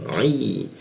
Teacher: Ma bibir bertemu bibir, ma, lalu ai menggunakan ain ya di jakun dia, dan aksennya ditebalkan